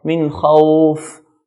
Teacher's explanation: The word khawf is mad al-lin, and fa at the end, the air comes out.